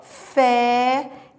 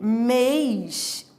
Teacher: Porque muda o timbre. Fé timbre aberto e mês é timbre fechado.